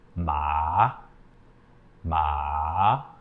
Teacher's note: the third tone starts low and Falls a little further down in your in your pitch and then Rises up again so